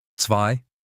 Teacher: Z is not Z, it's TS.